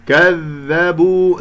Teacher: ذال يجري فيها الصوت ولا يجري فيها النفس